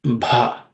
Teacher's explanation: The first letter bha is the fourth letter in the per varga or per class of consonants. It has to be aspirated also with little bit of extra air.